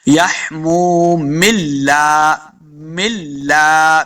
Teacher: میم کو لام کے ساتھ ملا دیتے